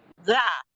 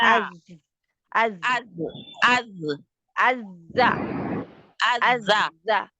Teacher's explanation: کے کنارے سے، تو سنایا دانتوں سفلا ہے، سنایا سفلا اچھا ثنایا سفلا اندر کی طرف لگتا ہے، اندرونی حصے پہ ، زا ہاں زا سخت، ہاں سختی سے جا کے لگ